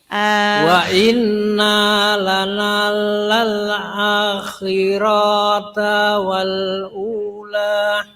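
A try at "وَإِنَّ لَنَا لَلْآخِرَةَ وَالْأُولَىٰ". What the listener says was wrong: Nah, nanya kepanjangan, rohnya kepanjangan. Wa inna lana lal akhirata wal. Nah, harus cepat. akhirata wal.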